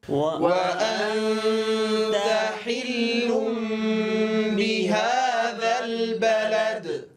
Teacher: لاحظوا ضم الشفتين عند حرف الواو